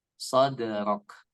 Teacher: baru di huruf dalnya itu memantul